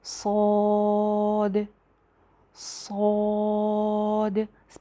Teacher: दूसरी बात, इसको लंबा करके पढ़ना है, इसके ऊपर मद है। सौद, सौद, पहले आवाज़ जो है वो सीटी की आएगी, ज़ुबान पीछे से ऊपर उठेगी, सौद। और अलिफ भी जो है वो इसका मोटा हो जाएगा।